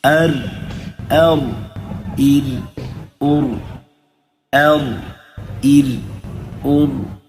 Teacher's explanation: میں حمزے کو باریک کر رہا ہوں اور را کو پر کر رہا ہوں تو جب بھی موٹا حرف اور باریک دونوں مل کر آ جائیں اس وقت اس بات کا خاص خیال رکھنا ہے کہ آپ نے موٹے اور باریک کا واضح طور پر اس کی ادائیگی کریں.